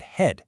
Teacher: It's not a nasal or a liquid. It's really just a simple voiceless puff of breath from your throat like in the word head. It's kind of like the ghost of a sound. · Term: h sound